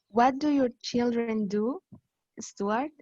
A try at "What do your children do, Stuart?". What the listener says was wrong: Ya, pero cuidado que no es como diferencia de volumen, es diferencia de tono. Entonces, sube.